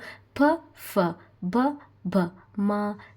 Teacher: ತುಟಿಗಳ ಸಹಾಯದಿಂದ ಉಚ್ಚರಿಸಲ್ಪಡುವ ಅಕ್ಷರಗಳಿಗೆ ಓಷ್ಟ್ಯ ವರ್ಣ ಅಂತ ಕರೀತಾರೆ